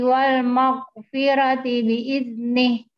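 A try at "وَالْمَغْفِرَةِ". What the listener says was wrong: Ro-nya keluarkan Bu, wal maghfirah.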